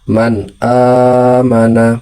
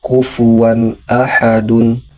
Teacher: nun mati atau tanwinnya dibaca dengan jelas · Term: izhar